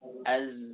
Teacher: Jahar itu tekanannya kuat. Sedangkan sin sifatnya hams. Hams itu lemah. Tidak ada tekanan sama sekali.